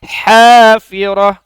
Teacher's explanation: pakai ha yang berada di tengah tenggorokan